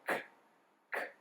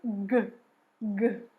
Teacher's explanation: lá no nosso véu palatar, a gente vai usar ele como ponto de articulação para o C e para o G. Não tem como você passar a sua língua no seu véu palatal, mas pensa que é lá atrás, perto da garganta, tá bom? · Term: velares